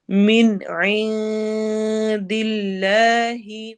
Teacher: من نون کے آواز کلیئر ہوگی، عین میں نون کے آواز کو چھپائیں گے. تو نون جو پہلا ہے من والا اس پر اظہار ہو رہا ہے اور عین پہ اخفا ہو رہا ہے.